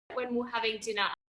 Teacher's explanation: And dinner. She doesn't say the letter R at the end of dinner. It changes to the schwa sound again.